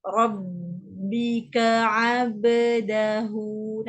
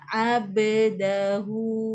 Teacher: 5 tadi yang kita dengar, yang kita tak apa nak dengar adalah qalqalah. Bila ba itu bertanda mati, kita akan jelas bunyi qalqalah dia.